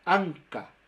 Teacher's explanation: esa es una n que la lengua está muy muy atrás pero no tan atrás como una ñ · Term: sonidos que nosotros llamamos nasales